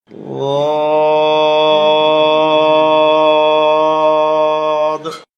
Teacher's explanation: লদ, 4 আলিফ লম্বা হবে, ঔকারের উচ্চারণ হবে না, জিহ্বার গোড়ার কিনারা উপরের মায়ের দাঁতের গোড়ায় লাগবে, মোটা হবে, 4 আলিফ লম্বা হবে।